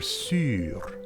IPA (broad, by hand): syːr